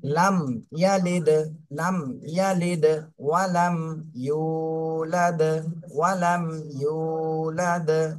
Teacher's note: মিমে থেমে একটু ওখানে দেরি করবেন, সামান্য, বেশি না